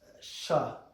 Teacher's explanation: But in Uruguay, and Argentina, it's sha, like a SH sound in English.